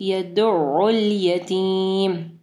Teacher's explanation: پہلا ساکن یدع، پھر دوسرا متحرک یدعُّ الیتیم. عین کو جو ہے حروف حلقی میں سے ہے تو حلق کے درمیانی حصے سے پڑھنا ہے